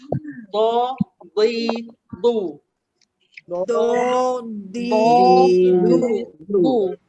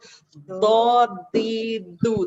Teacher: Dot sebenarnya kena keluar dari tepi lidah yang kena dengan geraham atas, kanan atau kiri ikut selesa kita. Dot. Tepi lidah lekatkan dengan geraham atas baru keluarkan. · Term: huruf dot